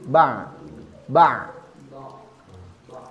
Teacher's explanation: tidak begitu mengalir seperti rakhawa dan tidak begitu ditekan seperti syiddah jadi tidak ba tapi ba ba Kita tahunya itu tawasud tekanannya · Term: tawasut